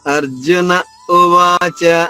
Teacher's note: ఉవాచ జరిగింది ఇప్పుడు అర్జునుడు చెప్తున్నాడు అర్జున ఉవాచ ఉ గొంతు నుంచి రావాలి అర్జున తర్వాత కొద్దిగా ఆగి ఉ గొంతు నుంచి రావాలి